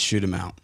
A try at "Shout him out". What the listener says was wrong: You shoot him? Don't say that. Shout him out. Shout him out.